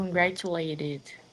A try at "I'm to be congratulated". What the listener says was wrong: Good, that's good.